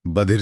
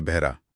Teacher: इसमें ध की भारी ध्वनि ह की हल्की ध्वनि में बदल गई